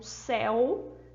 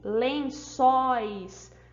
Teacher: um céu a gente tem um monossílabo que eu tenho um ditongo aberto que a gente percebe que na hora de vocalizar de falar a nossa boca abrir um pouco mais